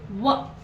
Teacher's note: ನಾವು ವ ಅನ್ನುವಾಗ ಸ್ವಲ್ಪ ದಂತ ಟಚ್ ಆಗ್ತದೆ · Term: ದಂತೋಷ್ಟ